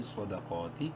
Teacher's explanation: کے پڑھیں گے، دال زبر دا، صدا، قاف کھڑی زبر قا، قاف کو منہ بھر کے پڑھتے ہوئے 1 الف کے برابر لمبا کریں گے کھڑی زبر کی وجہ سے،